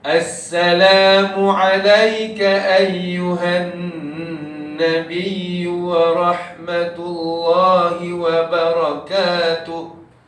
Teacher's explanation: Cuma kalau boleh, dengung nun tu panjangkan sikit.